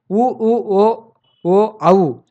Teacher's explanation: உதடுகளை குவித்தல். வாயை திறத்தல் பிளஸ் உதடுகளை குவித்தல்